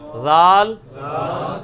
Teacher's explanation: یہ سیٹی کی آواز نہیں ذال میں آنی چاہیے، یہ نرمی والا ہے